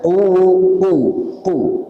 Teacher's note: Pangkal lidah ke langit-langit bagian belakang. Pangkal lidah ke langit-langit bagian belakang. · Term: huruf qaf